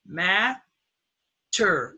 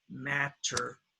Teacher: syllable rule with stress mat term that's two syllables one two the first syllable is stressed so the first syllable takes the short a